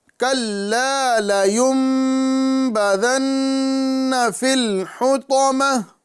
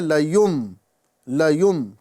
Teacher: نون ساکن کو بدلا جا رہا ہے میم سے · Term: اقلاب